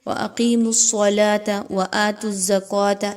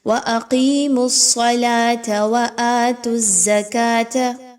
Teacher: صاد کو موٹا پڑھنا ہے، لام موٹی نہیں ہونی چاہیے